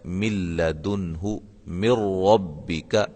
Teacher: نون ساکن کے بعد لام آ گئی ہے اور نون ساکن کے بعد را آ گئی ہے. اس کو ہم ادغام کریں گے لیکن غنے کے بغیر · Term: ادغام بلا غنہ